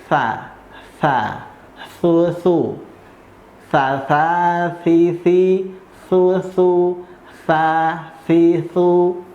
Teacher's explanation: Kalau turun sedikit, ujung lidahnya itu nyentuh di ujung gigi seri yang atas. Nah, nih agak sedikit melet